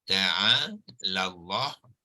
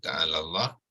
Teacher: alif maksurah tidak disebut, hamzah wasal tidak disebut, dan lam yang pertama pun tidak disebut lagi sebab dia sudah dimasukkan ke dalam lam yang kedua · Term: lam yang bertasydid